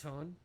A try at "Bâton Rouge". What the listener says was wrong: Yeah, it's more like Bâton. The N isn't really pronounced at the end of Bâton.